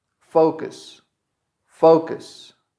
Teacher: The U, you can't hear it in this verb. It's not correct to say focus. · The stress is in fo. And then the second part is going to be cus.